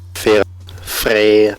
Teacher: an open, mid-front, unrounded vowel toward the front of the mouth, like the in bed